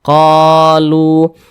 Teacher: Sebelumnya ini ada huruf yang memiliki tanda baca dhammah, maka huruf yang memiliki tanda baca dhammah ini dibaca panjang karena dia berposisi tepat sebelum waw sukun ini. Lu dibaca panjang, mad tabi'i panjangnya 2 harakat.